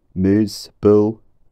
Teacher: a high monophthong with lip rounding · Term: muse vowel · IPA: [ʉ]